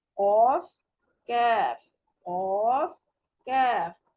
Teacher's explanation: کاف جو ہے زبان کو قاف کی جگہ سے کچھ منہ کی طرف, یعنی پہلے ہم نے نرم تالو کو زبان کی جڑ لگائی ہے, اب ہم نے سخت تالو جو منہ کی طرف ہے اس کو زبان کی جڑ لگانی ہے. تو پھر باریک آواز کے ساتھ کاف ادا ہوگا, قاف کیف قاف کیف.